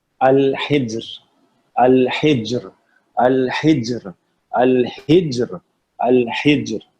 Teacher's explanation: اس میں جیم جو ہے اس میں کلکلا آ رہا ہے اور را کو جو ہے باریک پڑھنا ہے